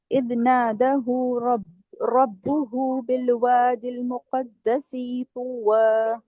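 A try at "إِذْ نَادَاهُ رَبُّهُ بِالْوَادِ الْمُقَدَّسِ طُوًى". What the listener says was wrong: دیکھیں نادا، دا پہ بھی کھڑا زبر ہے نا، 2 حرکت لمبا جائے گا، اور مقدسی سین کی زیر لمبی نہیں کرے.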